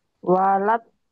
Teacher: L-nya kayak ditahan sebentar